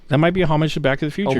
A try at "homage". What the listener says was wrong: Homage. Homage. No, you don't have to pronounce the H.